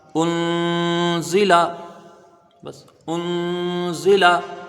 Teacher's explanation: اب یہاں پر نون ساکن ہے، نون ساکن کے بعد حروف اخفا کا زا آیا، ایک الف کی مقدار غنہ کیا جائے گا اور باقی زا کے نیچے زیر ہے، لام میں زبر ہے، یہ جلدی پڑھے جائیں گے۔